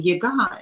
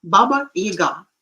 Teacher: somehow it is the stress is falling on the first syllable, which is wrong